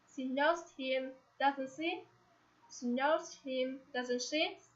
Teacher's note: the speaker isn't sure, and asks for confirmation. In this situation, you have to bring the voice up at the end of the question.